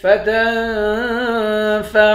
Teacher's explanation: تا کو نون کے ساتھ ملا کر نون پر اخفا کریں گے.